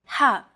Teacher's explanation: ha is pronounced deep in the throat ha this sound is pronounced very deep in the throat you